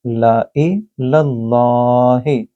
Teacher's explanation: لام اللہ کے لفظ کے اندر اگر اس سے پہلے زبر ہو تو اس کو موٹا پڑھا جاتا ہے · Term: تفخیم